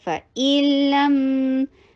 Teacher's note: لام کے اوپر توسط کا ٹائم دیجئے، میم کے اوپر توسط کا ٹائم اس سے ذرا سا کم ہوگا ، فَإِلَّمْ فا کی آواز چلاتے جائیے، رخاوہ میں سے ہے،